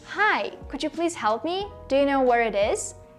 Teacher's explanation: your voice goes up at the end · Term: rising tone